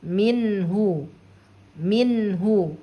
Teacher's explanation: Maka cara membaca nun sukun ini harus dibaca jelas suara N-nya atau suara nun sukunnya. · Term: izhar halki